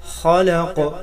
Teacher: خا حروف مستعلیہ ہے، موٹا کر کے پڑھیں گے. لام کو موٹا ہونے سے بچائیں گے.